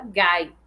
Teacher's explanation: o I de gaita, ele é, na verdade, um glide, ou seja, ele está numa posição assilábica. Ele faz parte da sílaba, numa vogal complexa dentro dessa sílaba gai.